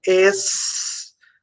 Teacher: O S e o C são encontros consonantais, porque eu pronuncio o S e pronuncio o C.